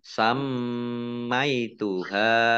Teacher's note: mim tasdid ini juga dibaca gunah atau mendengung ditahan 2 harokat